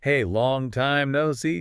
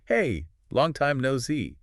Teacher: Friendliness, often a rising pitch on see.